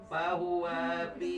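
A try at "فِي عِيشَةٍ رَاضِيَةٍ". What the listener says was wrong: Isatir. Pi panjang. Bahwa fi.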